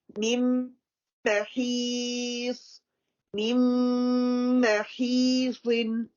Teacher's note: So we drop the first noon, and first meme merge into the second meme fully.